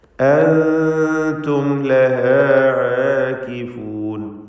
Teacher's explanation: അൻതും ലഹാ ആകിഫൂൻ, അൻതും ഇവിടെ സാക്കിനത്ത് മീം ഇൽഹാർ ഷഫവി നൽകി മണിക്കാതെ വെളിവാക്കേണ്ടതാണ്.